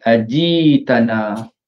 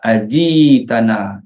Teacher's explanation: Pertamanya kalimah ajik tanah, di situ Hamzah yang mati ditukar jadi huruf mat